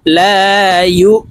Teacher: জবরের বাম পাশে খালি আলিফ মদের হরফ, তো এই লামকে 1 আলিফ টেনে পড়ব।